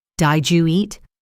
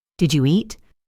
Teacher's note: The D sound at the end of did and the Y sound at the beginning of you often blend together to create a J sound like in the word judge.